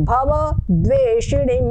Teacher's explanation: जहां पर संयुक्त अक्षर होता है ये द और व संयुक्त अक्षर है तो इसके पहले जो भी वर्ण होता है उसको गुरु उच्चारण होता है मतलब दीर्घ रूप में उच्चारण उसे थोड़ा सा प्रेशर दिया जाता है